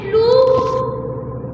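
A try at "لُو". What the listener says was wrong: वाव को थोड़ा सा खींचते हैं ना।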